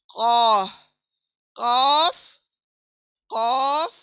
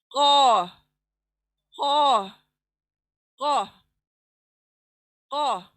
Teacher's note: दूसरा लेटर लेते हैं हलक में जो छोटी जुबान है, वहां लगने से जबान की जड़ ऊपर लगने से अदा होगा हलक के अंदर से कौफ।